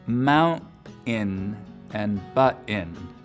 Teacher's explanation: with just a pure glottal stop for that t sound in the middle of the word